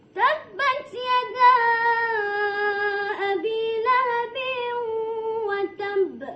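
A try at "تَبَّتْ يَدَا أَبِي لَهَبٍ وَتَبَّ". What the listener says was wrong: Lambat lahabiu tu. Cepat sikit. Lahabiu.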